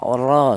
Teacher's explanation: Di mana huruf ro ini berharakat fathah ini dibaca tafhim atau dibaca tebal ya. Untuk menebalkan huruf ra yang dibaca tafhim itu menggunakan lidah bagian belakang diangkat ke atas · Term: tafkhim